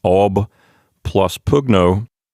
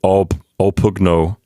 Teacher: so the b in ob gets assimilated into the p sound and it turns into a p so we get all pogno with two p's instead of with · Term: assimilation